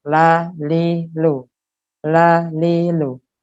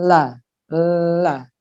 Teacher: Di depan nempel, kemudian angin-angin atau suara keluar dari pinggir-pinggirnya. El, ya, jadi di pinggirnya tuh ada ruang, di situ keluarlah suara di situ. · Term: lam yang tipis